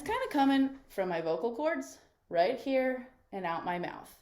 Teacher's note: And there's not much resonance. It sounds kind of flat, and it just kind of sounds a little bit grating the way that I'm talking right now.